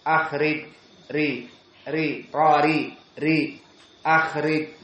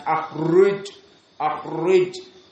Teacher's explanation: ra di sini muraqqaqah dikarenakan kasrah